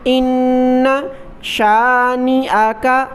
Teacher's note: ان نون مشدد پر غنہ کیا،